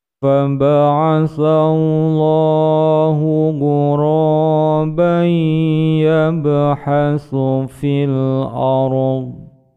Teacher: tanwin bertemu dengan ya, dimasukkan pada huruf ya, ditekan panjang dua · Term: idgham bigunnah